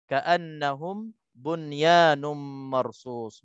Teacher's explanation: Nun mati bertemu dengan ya dalam satu perkataan, hukumnya izhar mutlaq. Izhar mutlaq tak didengung disebabkan tak cukup syarat, sebabnya berlaku pertemuan itu dalam satu perkataan.